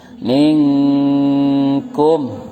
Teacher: Nun sukun bertemu kaf. Namanya ikhfa hakiki. Cara bacanya samar dan dengung.